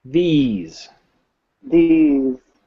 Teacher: how we make the th sound we bring our teeth together we move our tongue so that it comes between our upper front and lower front teeth